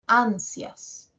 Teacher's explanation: As suena más. La I es más cortita. ¿Ya? Dura menos la I. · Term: diptongo